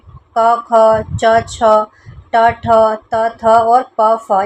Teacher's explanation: क, ख, च, छ, ट, ठ, त, थ, और प, फ इनको अघोष वर्ण कहा जाता है